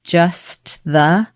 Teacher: And so what happens is when you have so many consonant sounds together, like S, T, TH, just the, there's a lot of movement that has to happen in a quick amount of time with the tongue. And most native speakers actually just get a little bit lazy and skip the T and go right into the TH.